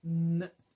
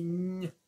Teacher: Son ñ et n sont des sons voisins. Dans le son n, il y aura juste la pointe de la langue qui vient appuyer sur le bout du palais, tandis que dans le son ñ, il y a beaucoup plus de morceaux de la langue qui sont collés au palais. Ça va être vraiment ça la différence entre ñ et n.